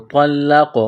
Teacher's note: طوا لام زبر طول، لام قاف زبر لقو، طلقو، قاف پر قلقلہ کریں گے